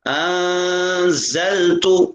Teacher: انزلت نون پر اخفا کیا جائے غنہ کی مانند ، اور زا کو سختی کے ساتھ ادا کیا جائے، انزلت